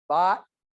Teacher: in some areas of the United States there's a collapse between bought and Bot so they're both pronounced bot